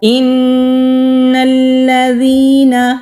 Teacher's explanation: نون کے اوپر تشدید ہے تو غنہ کریں گے، 2 سیکنڈ کے لیے آواز کو ناک میں چھپا کر رکھیں گے